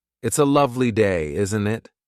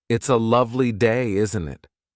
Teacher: notice the upward tone at the end of isn't it